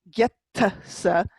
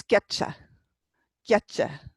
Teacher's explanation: The I is a slide down, and it's telling you how to pronounce the T. It's slenderizing the T. So instead of saying getsa, it's getcha, getcha.